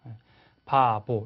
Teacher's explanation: 우리나라 비읍은 성대가 울려지지 않아요. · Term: 무성음